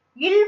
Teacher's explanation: இந்த குண்டியில் வந்து மேல்வாயோட பல்லோட அடிய நாக்கு ஓரங்கள் தடித்து நெருங்குவதால பிறக்குது. இல் வந்து மேல்வாயை நாக்கின் ஓரங்கள் தடித்து தடவுவதால பிறக்குது